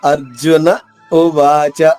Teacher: అర్జున తర్వాత కొద్దిగా ఆగి ఉ అనేది గొంతు నుంచి పలకాలి